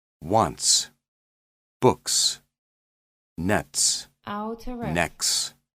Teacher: t plus s is voiceless